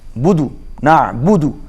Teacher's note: نعبد عین حروف حلقی ہے، حلق میں سے ادا کریں گے، اور بدو پڑھیں گے، بودو نہیں پڑھیں گے.